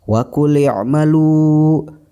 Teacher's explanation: lu dibaca panjang 2 harokat karena ini masuk ke dalam hukum mad tabi'i